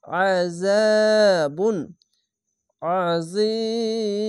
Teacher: আইনটিকে মোটা করে গলা চিপে পড়বেন। আযাবুন আযীম এখানে শেষ অক্ষরের সাকিন দিলাম, দুই পেশ আছে বাদ দিয়ে সাকিন দিলাম। · শেষ অক্ষর সাকিন দিলে এক দুই তিন তিনটি অক্ষর তিন আলিফ টেনে পড়বেন মাধ্যে আরজি হবে অবশ্যই খেয়াল রাখবেন যেখানে থামতে গেলে সাকিন দিলে · এখানে দেখেন আয়াত আছে থামতে হবে, তার জন্য শেষ অক্ষরে সাকিন দিয়ে 1 2 3 তিনটি অক্ষর তিন আলিফ টেনে পড়বেন, মাদ্দে আরজি হবে